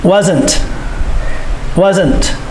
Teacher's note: Remember, the S makes the Z sound, and you must sound the T at the end.